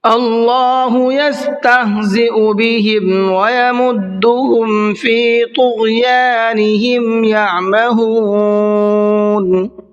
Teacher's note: اللہ کے نام کو منہ بھر کے پڑھنا ہے، اس لیے کہ اللہ کے نام سے پہلے زبر ہے۔ یستہزئ، زیو نہیں پڑھنا ہے اس کو، بلکہ زیو، زا الگ ہے اور حمزہ الگ ہے۔